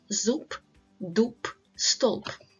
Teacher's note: BP. So the voiced consonant B at the end of the word is pronounced as P, like in zub, dub, stolp.